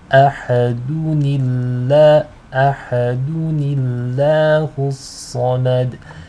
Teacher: So to connect between the two, you have to read it as ahadunillah, ahadunillahu samad. In this case, the lam will be light because it is preceded by a noon with a kasra.